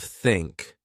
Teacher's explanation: Then I learned that to make the sound I needed to relax. I put my tongue gently between my teeth. I blew air.